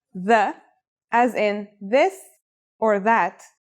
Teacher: This letter's pronunciation is a voiced sound, the, as in this or that. It's pronounced with the tongue between the upper and the lower teeth. It's quite easy to pronounce.